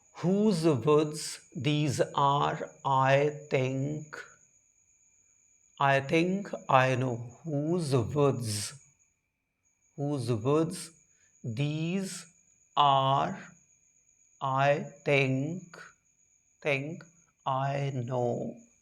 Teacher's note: See, the poem is written in iambic tetrameter, means the first the first syllable of the poem is unstressed, whereas the second one is stressed, then third one again unstressed, fourth one stressed, then again this unstressed, this stressed, then again unstressed, stressed.